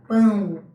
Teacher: Em pão, esse O tem som de U. Aqui ele não é vogal, ele é uma semivogal. O fonema semivocálico U, apoiado em uma vogal A, na mesma sílaba.